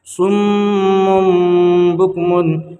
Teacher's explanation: صم بکم، دیکھیے اس کا قاعدہ ہے کہ صم تنوین یا نون ساکن کے بعد، ٹھیک ہے، اگر با آئے گا تو تنوین کو یہاں پر دیکھیے میم کے اوپر 2 پیش کی تنوین ہے، 2 پیش کے تنوین کے بعد با ہے، اس لیے 2 پیش کی تنوین کو میم سے بدل کر غنہ اور اخفا کے ساتھ پڑھیں گے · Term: اقلاب